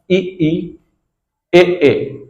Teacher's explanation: अग्र स्वर यानी जीभ के आगे वाले भाग से